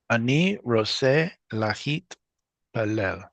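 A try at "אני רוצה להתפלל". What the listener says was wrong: Perfect, Habibi.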